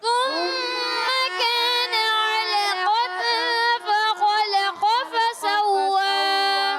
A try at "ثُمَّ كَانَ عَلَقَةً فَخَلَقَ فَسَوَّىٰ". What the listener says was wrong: اچھا بعض بچوں کی آواز آتے ہے تم نہیں کرنا، تا نہیں ہے، سا ہے، ثم سا سی سو ثم، ٹھیک ہے؟